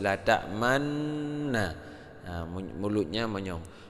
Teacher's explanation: itu kita baca tetap la ta'man, man, tapi bibirnya monyong, ya, tidak seperti biasa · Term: Ismam